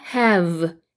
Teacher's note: V 발음 아랫입술에 윗니를 살짝 물고 진동 돌리는 소리 단소 불듯이 해서 have 그 다음에 얘는 have 붙여서 have 이렇게 되고요.